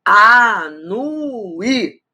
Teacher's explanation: Esse I é tônico, faz hiato com a vogal anterior, está sozinho na sílaba.